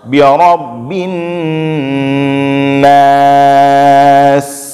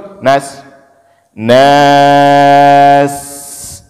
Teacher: di ujung sin itu jangan lupa kita alirkan suara dan alirkan angin.